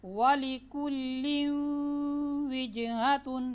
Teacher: نون تنوین کو واو کے ساتھ ملا رہے ہیں، اسی کو کہتے ہیں ادغام بالغنہ۔